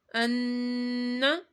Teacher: کیونکہ نون کے اوپر یہ چھوٹی سی علامت ڈبلیو، نون میں شدد ہو گیا، تو نون میں شدد پر گنہ کیا جاتا ہے